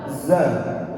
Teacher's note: Pakai gigi seri bawah. Ya. Dia harus bergetar.